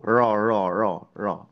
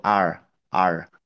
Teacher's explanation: Memang bergetar huruf ro itu alih-ali misalkan kalau dibandingkan dengan bahasa Inggris yang r-nya itu ro ro ngegantung ya enggak nempel sama sekali antara ujung lidah dengan ee daerah langit-langit mulut kita tergantung kalau R-nya Inggris itu R r gitu ya.